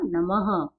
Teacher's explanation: अब ये तो विसर्ग है, लेकिन हम इसका उच्चारण क्या करते हैं? ह।